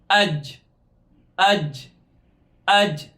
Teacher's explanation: ہماری زبان کا سینٹر والا حصہ اوپر کے تالو کو لگ رہا ہے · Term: جیم کا مخرج